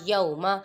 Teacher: یا پہ واولین ہو رہا ہے، ادھر لمبا نہیں کریں گے